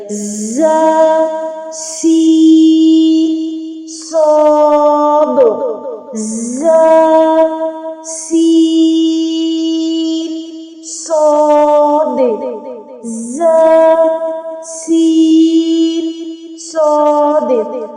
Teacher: اس کے بعد ہے سیٹی والے حروف، جن کو حروف صفیریہ کہا جاتا ہے، وہ بھی 3 ہیں، اور ان کو ادا کرتے ہوئے ان میں سیٹی آتی ہے